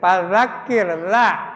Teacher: fadzakir ro-nya dibacanya tarkik tipis ya